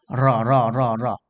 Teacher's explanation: जीभ पीछे ले मोड़ कर फिर सीधा करना होता है